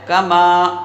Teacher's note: کسی نے کاما پڑھ دیا تو بھی غلط ہے، کسی نے کما پڑھ دیا بغیر الف کھینچے تب بھی غلط ہے، بلکہ کاف کو نہیں کھینچنا ہے، میم کو ایک الف کے برابر کھینچنا ہے۔